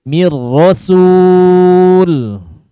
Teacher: Jadi dikatakan kamil, nunnya tidak, sudah hilang. Sudah hilang sempurna. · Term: Idgham mutaqaribain, shagir, kamil